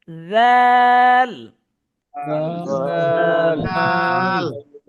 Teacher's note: জিহ্বাটা আপনার দাঁতের পিছনে হালকা আগার মধ্যে লাগবে